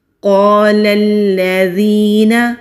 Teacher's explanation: قاف مستعلیہ حروف میں سے ہے، موٹا پڑھیں گے۔ خالی الف سے پہلے زبر ہے، ایک الف کے برابر کھینچ کر پڑھیں گے۔ · خالی الف سے پہلے زبر ہے، ایک الف کے برابر کھینچ کر پڑھیں گے۔ لام کو لام کے ساتھ مضبوطی سے ملائیں گے کیونکہ لام کے اوپر تشدید ہے۔